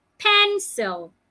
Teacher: Pen must be said louder, longer, and clearer.